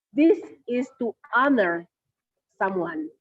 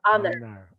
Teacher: So honor there is supposed to be silent H.